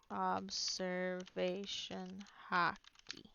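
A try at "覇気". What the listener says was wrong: No, not hockey like the sport HAKI. HA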